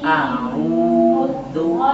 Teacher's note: Dhammahnya ditunaikan dari manyunnya sedikit.